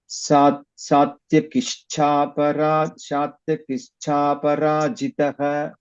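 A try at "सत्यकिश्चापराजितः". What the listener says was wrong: Here also it is cha. It is Alpa Prana. You are reciting Mahaprana there. Satyakishchaparajitah. You are reciting it as Kishtha. It is Alpa Prana, not Mahaprana.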